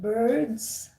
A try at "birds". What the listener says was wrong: the birds, not, I kept hearing you guys saying bards. is instead of a. You pronounce it as birds, but it's birds.